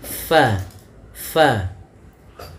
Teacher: Bibir kita rapat, padahal huruf fa ada sedikit furjahnya, ada sedikit ruang yang kosong yang mana untuk mengeluarkan nafasnya